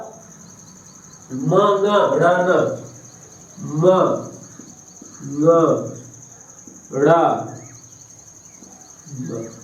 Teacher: ये अनुनासिक वर्ण है और इनका उच्चारण स्थान जो है वो नासिका है